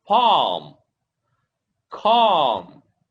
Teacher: Okay, the L sound is silent.